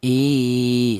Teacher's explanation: Panjangnya yaitu satu alif atau dua harakat atau dua ketukan. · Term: mad thabi'i